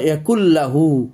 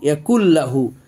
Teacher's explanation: তো দেখেন এই যে গুন্না ছাড়াই ইদগাম হয়েছে, নুন সাকিনটা লামের মধ্যে ঢুকে গেছে